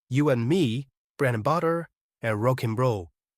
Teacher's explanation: The d after and here can be omitted. We can directly read it as n, just like the pronunciation of the letter n.